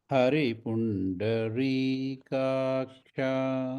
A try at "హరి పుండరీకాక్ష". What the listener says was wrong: అంతే వెంటనే అనండి. కాక్ష వెంటనే అనండి. రీ రీ రీ సౌండ్ కాకూడదు. రీ మామూలు రీ, మనం తెలుగు భాషలో రీ. అంతే అంత డ్రాగ్ చేస్తున్నారు, ఎక్కువ డ్రాగ్ చేయమాకండి.